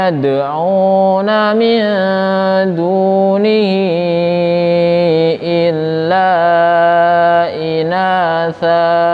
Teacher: Yang pertama itu migunah dimasukkan nun mati ketemu huruf ya. Yang kedua qalqalah sugro iyad, pantulannya pelan.